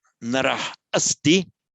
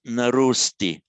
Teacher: when a word ends in an ah, followed by another word beginning with a short ah, rather confusingly, the whole lot merge into a single o